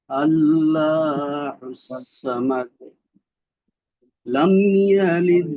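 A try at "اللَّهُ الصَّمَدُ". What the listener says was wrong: আল্লাহুস সামাদ, এই যে ভাইজান আল্লাহ লাম কিন্তু মোটা হবে, এখানে আল্লাহ হয়ে গেল আপনার উচ্চারণটা। আল্লাহ আল্লাহ, দেখবেন মসজিদের আজান গুলো এইভাবে আসে, আল্লাহু আকবার, এইভাবে উচ্চারণটা মোটা করতে হবে, আগে মোটা, আল্লাহুস সামাদ।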